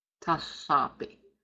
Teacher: I want you to be speaking that aspirated L sound.